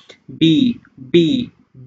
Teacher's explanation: বি উচ্চারণ করতে গেলে তোমার উপরে এবং নিচের দুই ঠোঁট কিন্তু একত্র করতে হচ্ছে